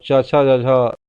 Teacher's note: तालु से निकल के संघर्ष करते हुए निकलता है